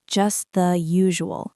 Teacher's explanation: Pay attention to the soft T sound at the end of just. Native speakers almost never pronounce the hard T when it is followed by the word the.